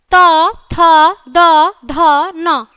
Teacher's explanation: दांत का जीवा के अग्र सिरे से स्पर्श दंत्य होता है